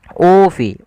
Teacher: Kemudian pada lafal ufi, di sini ada bacaan mad badal, yang dimana mad badal terjadi apabila ada huruf hamzah bertemu dengan huruf mad. Di sini ada hamzah berharakat dhammah bertemu dengan huruf mad, yaitu ufi. Ufi panjangnya adalah 2 harakat.